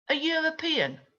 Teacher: Ah, but European there doesn't start with a consonant. But if you listen, it starts with a consonant sound, of y.